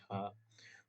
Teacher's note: तालव्य महाप्राण घोष व्यंजन वर्ण का उदाहरण है